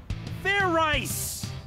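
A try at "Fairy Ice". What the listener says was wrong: Like I said, it's not fair rice, it's fair ice. Do it again, and this time make sure you pronounce the Z.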